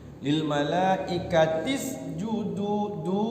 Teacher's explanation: Malaikah panjangnya 5 harokat, 2,5 alif. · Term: Mad wajib muttasil